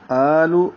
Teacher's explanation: آ حمزہ پر کھڑا زبر ہے، 2 حرکات لمبا ہوگا، 1 الف کے برابر